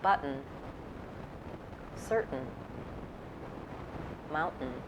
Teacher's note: for syllabic n the consonant is the whole syllable it sounds like syllabic n is usually an unstressed syllable after